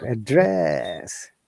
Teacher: Now, when you're saying verb, our tone is down to upper.